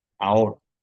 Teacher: la H es como si no estuviera, porque a la hora de pronunciarlo, lo que yo junto ahí es, al principio de la palabra, es la A y la O